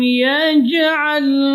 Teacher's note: jim keluar dari tengah-tengah lidah, huruf syiddah, dan termasuk juga huruf qalqalah. Jadi tidak boleh keluar udara.